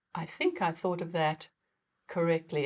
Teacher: i can make a perfect economical th by keeping my tongue well behind my top teeth